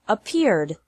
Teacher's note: The third pronunciation of Ed is like D with no extra syllable. Ed is pronounced like D after all other verbs that don't fit in the first or second categories.